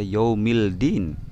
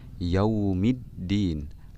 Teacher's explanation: alif lam bertemu dengan huruf Dal tidak dibaca Yaumil Din tapi dibaca yaumid diin lemnya dilebur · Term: lamnya dilebur